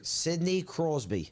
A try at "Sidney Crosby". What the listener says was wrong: Crosby, not Cosby. No, it's Crosby.